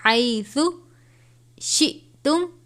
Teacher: حمزہ اور جزم ایک ساتھ، تو حمزہ ساکنہ ہے، جھٹکا دے کر پڑھیں گے